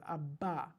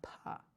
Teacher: it's a voiced plosive, a ba, right? The unvoiced plosive is the pa